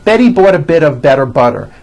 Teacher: all the T's are pronounced as D's because they fall between vowels · Again, notice that you do not hear any T sounds. T, t. They're only D's, d, d, which are voiced.